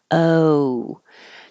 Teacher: moving from the position that's more like uh like up where your tongue is low in the middle o and then the back of your tongue Rises as your lips round to make the O so you should finish in an oo position uh to oo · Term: American o